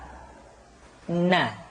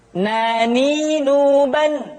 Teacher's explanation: huruf na caranya menyentuhkan ujung lidah kita di antara posisi ro dengan la